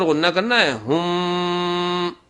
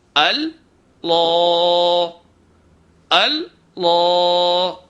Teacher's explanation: میم کے اوپر غنہ کرنا ہے ہم، لیکن لام کے اوپر نہیں کرنا ہے. تو ایک بات یہ ہے کہ لفظ اللہ کے الف کو بھاری نہیں کرنا ہے، لام کو بھاری کرنا ہے.